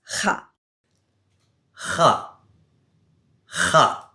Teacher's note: This is said at the top or back of your throat like you're clearing your throat.